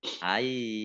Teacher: Nah, mimnya ada tasdidnya. Ya, mim tasdid dibaca gunnah atau mendengung, ditahan kurang lebih 2 harokat.